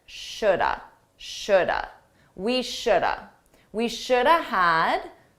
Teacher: Notice that L is silent.